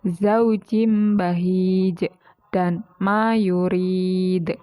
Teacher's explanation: cara membacanya yaitu dengan pantulan yang kuat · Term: qolqalah Kubro